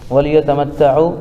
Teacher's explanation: واو ساکن سے پہلے عین کے اوپر پیش ہے اس لیے واو مدہ ہوگا، ان کو تھوڑا کھینچ کر پڑھیں